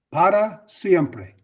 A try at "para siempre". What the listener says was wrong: Bien, okay. Para siempre is less of a challenge.